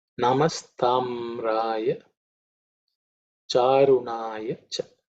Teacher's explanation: all the consonants are not aspirated, so it should be very simple to chant.